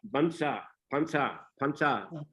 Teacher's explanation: And Pansa, actually it is a Sanskrit word, Barsha, but Thais, they cannot pronounce Ra at the end of a syllable. So Barsha becomes Bansa, Pansa